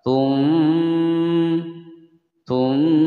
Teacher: Suara nun sukun diganti menjadi mim. Tapi dalam pengucapan ini bibir jangan terlalu rapat. Tum, tum, sedikit diberikan ruangan. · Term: itlab